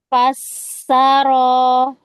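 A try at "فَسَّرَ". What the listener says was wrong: Jangan panjang-panjang, itu namanya tamtid. Fasaro.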